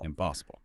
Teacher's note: it changes to IM in impossible impossible that happens before sounds like MP or B